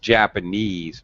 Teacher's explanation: japanese has primary stress on the final suffix